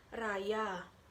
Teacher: konsonan getar alveolar yaitu R. Contohnya raya.